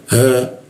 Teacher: ha, posisinya di tenggorokan bagian bawah